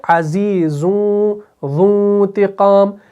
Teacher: زا جو ہے اس کے اندر اپنا ایک بزنگ ساؤنڈ ہوتا ہے · زا اور ذال ان کا جو مخرج ہے وہ الگ الگ ہے، لیکن آواز کے اعتبار سے یہ سیم لگتے ہیں